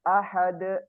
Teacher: untuk huruf Dal qalqalahnya dibaca tebal